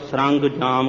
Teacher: ਇਸ ਨੂੰ ਸਰੰਜਾਮ ਹੀ ਉਚਾਰਨਾ। ਕਈ ਵਾਰ ਸਰੰਗ ਜਾਮ ਕਹਿਣ ਲੱਗ ਜਾਂਦੇ ਨੇ, ਟਿੱਪੀ ਨੂੰ ਗੱਗੇ ਦੀ ਆਵਾਜ਼ ਦੇ ਦਿੰਦੇ ਨੇ।